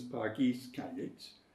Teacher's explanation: Pargeiys, stressed on the second syllable because it's in rhyme throughout the verb.